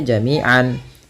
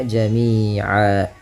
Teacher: Nah, awalnya jami'an. Kalau kita waqaf maka tanwinnya diiwadkan, dibadalkan, diganti menjadi fathah saja ketemu alif. Maka jami'an berubah menjadi jami'a. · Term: mad iwad